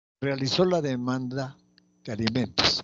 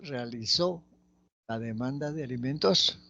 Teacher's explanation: Esta es una oración que tiene una entonación ascendente